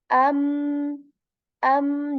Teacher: I'm saying a and then making a nasal sound on meem